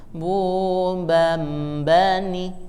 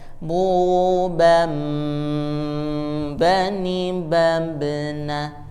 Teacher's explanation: kalau ini dibaca iklab, yaitu ditahan.